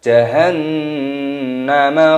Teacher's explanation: Di sini nun tasdid hukumnya dibaca gunnah berdengung